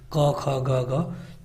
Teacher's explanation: क, ख, ग, घ, तो ये कंठ और निचली जीभ से ये आते हैं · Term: क वर्ग